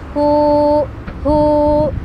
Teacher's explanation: ini jadi huruf mad ya, jadi panjang karena sukun sebelumnya dhammah, maka panjang bacanya jadi begini, hu, jadi 2 harokat gitu ya.